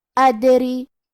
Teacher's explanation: آخری میں را کے نیچے زیر ہے، لہذا ہمیں را کو صرف زیر سے پڑھنا ہے اور ہم اسے پتلی آواز میں پڑھیں گے